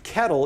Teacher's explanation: There basically is a different type of L. The L has essentially become a vowel. Realistically, there's like a little bitty vowel before it.